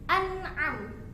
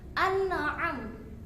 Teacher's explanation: nun sukun termasuk memiliki sifat at-tawassut. Jadi ditahan sedikit.